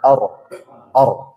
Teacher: Jadi getarkan sekitar 2 getaran saja. Or, ro. Hirro.